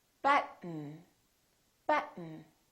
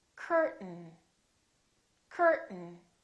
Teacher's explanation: when a t is followed by an n keep your tongue up don't release it just go directly to the end